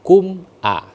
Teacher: Idhar syafatun, syafawi itu syafatun, dua bibir yang tertutup. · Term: idhar syafawi